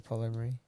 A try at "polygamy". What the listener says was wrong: you said it like you just slurred the whole world together last time